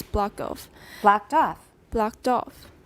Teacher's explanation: both are stressed but we're at the end of an utterance so off is going to be higher it sounds like it's got more stress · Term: tonic stress